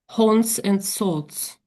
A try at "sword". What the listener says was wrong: Yeah, there's no S though, so just sort. Sort.